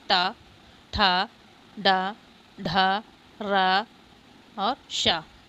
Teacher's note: ये मूर्धा स्थान से बोले जाते हैं